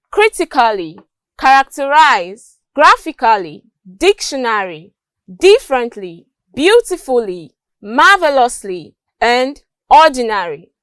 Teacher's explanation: examples of words stressed on the first syllable